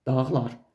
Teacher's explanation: Hanı mənim gördüyüm yığıncaqlar, dağlar cümləsində dağlar xitabında vurğu birinci hecadadır.